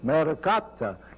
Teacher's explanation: this name for a woman maricotta it's a very round R sound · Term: rolling R